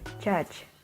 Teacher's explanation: The j sound is called voiced palatal affricates